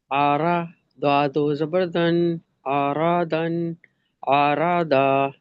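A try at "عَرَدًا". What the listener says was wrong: آرا نہیں، را. پتہ چلے کہ عین باریک ہے، اور را موٹا ہے، را. را، را ون. عین کی آواز نکالیے حلق کے درمیان سے.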